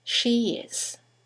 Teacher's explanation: there's a semi-vowel, y, that links the vowel at the end of she to the vowel at the beginning of is.